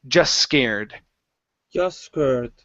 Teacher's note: So instead of saying just scared, we're going to say just scared. One S sound and remove the T